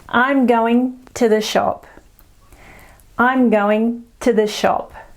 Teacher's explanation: we use the schwa to link the sounds together, and it's very soft and very quick.